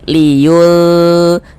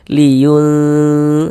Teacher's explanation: yang dibaca samar itu adalah bunyi nun sukunnya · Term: ikhfa hakiki ausat